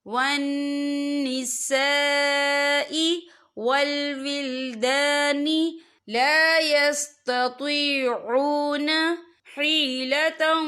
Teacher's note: وَسَاءَتْ مَصِيرًا إِلَّا الْمُسْتَضْعَفِينَ مِنَ الرِّجَالِ وَالنِّسَاءِ، یا دیکھیں وَالنِّسَاء، یہاں خالص سے پہلے زبر ہے اور اس پر مد بھی ہے، یہ مد جو ہے مد متصل ہے، اس کی مقدار 4 حرکت کے برابر ہے تو ہم اسے 4 حرکت کے برابر کھینچ کے پڑھیں گے